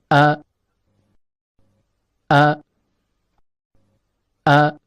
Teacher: Huruf hamzah keluar dari pangkal tenggorokan